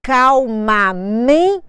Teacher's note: porque não é acento gráfico é acento tônico é a força na palavra calmamente me é a minha sílaba tônica mas ela não tem acento gráfico porque nem sempre a sílaba